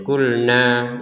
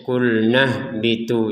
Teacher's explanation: Sukun ini yang akan meniadakan panjangnya nun ini, sehingga kita yang awalnya bacanya kulna, ya, maka sekarang terbacanya kulnah bitu, jadi tidak ada panjang sama sekali.